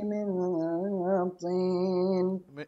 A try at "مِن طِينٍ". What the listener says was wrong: من طين طين الطاء ليس فيها همس من طي طي